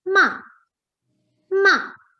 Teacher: the fourth tone is the falling tone in the fourth tone ma is pronounced as ma ma okay